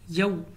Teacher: واو لین کھینچ کر نہیں پڑھیں گے، بغیر کھینچے بغیر جھٹک دیے پڑھیں گے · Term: مد لین